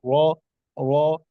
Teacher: تو خواہ خواہ بہت زیادہ تھرتھراہٹ بھی جیسے را میں کرتے ہیں نا، را، تو را کو پر ضرور پڑھا جاتا ہے جب زبر ہو، لیکن اس میں وائبریشن نہیں ہونی چاہیے، را را. اسی طرح خواہ بہت زیادہ حلق سے مطلب زور لگا کر نہیں پڑھنا، بلکہ اسے پر کرنا ہے حروف مستعلیہ میں سے.